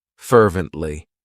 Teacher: It has three syllables and the stress is on that first syllable.